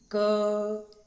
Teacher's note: यदि हम क का उच्चारण करेंगे तो क के साथ अ की ध्वनि भी मुख से निकलेगी। क, जब क का उच्चारण करते हैं तो आखिरी में हमको अ की ध्वनि सुनाई देती है।